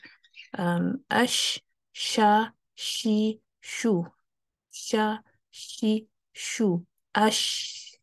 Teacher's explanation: شین کو اس کے ساتھ آواز، سانس بھی ہے، آواز بھی ہے، آواز جاری رہتی ہے